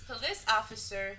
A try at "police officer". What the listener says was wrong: Police officer. Well, it sounded like you said piss officer. police officer.